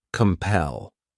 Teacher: this word has two syllables and the stress is on that second syllable